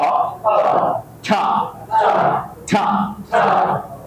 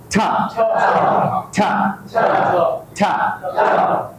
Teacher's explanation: জিহ্বাটা উপরের তালুর মাঝ বরাবর জোরে লাগিয়ে ধরতে হবে, এরপর বাতাস সৃষ্টি করতে হবে, বাতাসটাকে সজোরে বের করে দিতে হবে।